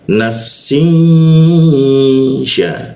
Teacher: kita tahan dengungnya itu dua ketukan. Jadi cara membacanya nafsin sya e sya itu posisi di tengah lidah dia ya syi jadi dengungnya itu di tengah lidah dia. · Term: Didengungkan